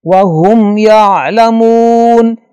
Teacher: میم کے بعد یا آ رہا ہے لہذا میم پہ غنہ نہیں ہوگا اور یہاں کوئی غنہ کرے گا تو یہ غلطی شمار ہوگا.